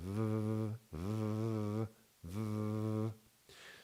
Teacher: this sound is called voiced labiodental fricative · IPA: /v/